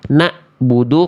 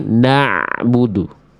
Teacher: Suaranya kalau ain itu dari tengah tenggorokan dan tidak terputus. Kalau hamzah dari pangkat tenggorokan dan suaranya mesti terputus.